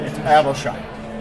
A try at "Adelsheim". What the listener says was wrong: Nope. There's no SH in German. So it has to be Adelsheim. No, you were very close, except for seeing an SH together, which for any American means sh.